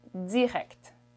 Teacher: the way a canadian french person would say this is direct there's a little buzzing sound in there